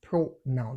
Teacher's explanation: pronoun, that is stressed on the first syllable